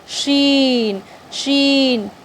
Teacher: शीन ज़बान के दरमियाने हिस्से और तालु के दरमियाने हिस्से से ये शीन अदा